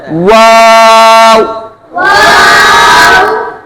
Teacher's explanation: اور واو ہونٹوں کی گلائی سے ادا ہوتا ہے